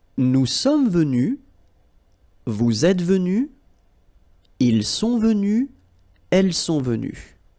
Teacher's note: you don't pronounce the final S